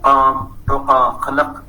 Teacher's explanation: Some Pashtuns, they produce this sound named uvular plosive.